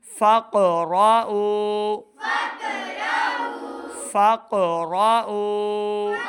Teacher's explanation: قاف 2 نقطوں والا، اس کو موٹی آواز کے ساتھ ادا کریں